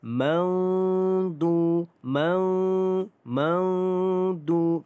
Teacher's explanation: Nun mati bertemu dengan huruf dad, iaitu kita dengungkan dengan 2 harakat kerana dia adalah ikhfa hakiki. Dengungkan 2 harakat.